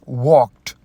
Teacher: So you can see that ed is used here, but the sound, that is t, because of the consonant k, that is voiceless.